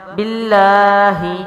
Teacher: با ہونٹوں سے، لام بھی باریک ہے، مضبوطی سے پڑھا جائے گا، کیونکہ تشدید والا حرف اپنے سے پہلے متحرک حرف سے ملا کر اور پھر اپنی حرکت کے ساتھ پڑھا جاتا ہے۔